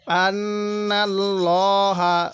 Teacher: আল্লাহ শব্দের লামের পূর্বে জবর আছে এজন্য আমরা লামটাকে মোটা করে পড়বো